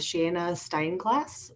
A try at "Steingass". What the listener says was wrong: That's just Steingass. Everybody puts an L or an R in there.